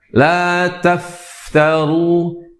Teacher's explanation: huruf fa mengeluarkan atau mengeluarkan udara atau mempunyai sifat hamas, yaitu banyak mengeluarkan udara